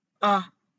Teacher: the fourth tone is from high to low ah just like someone hit you